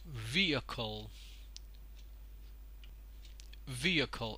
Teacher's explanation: the primary stress is put on the first syllable